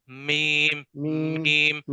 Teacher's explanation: دونوں ہونٹوں کے خشکی والے حصے کو ملانے سے میم ادا ہوتا ہے